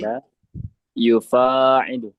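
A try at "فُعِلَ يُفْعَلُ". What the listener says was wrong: yufa'alu, akhi. Fathah. Ya, sebelum akhirnya di fathah. Fu'ila. Yufa'alu.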